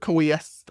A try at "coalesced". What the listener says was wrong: You were close. You just forgot that L. Coalesce.